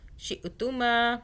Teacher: شئ جھٹکا آ رہا ہے، شین کے بعد حمزہ ہے